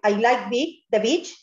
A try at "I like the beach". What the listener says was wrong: alárgame más la I, beach. digas, beach, no, más larga. Beach, siempre sonreír.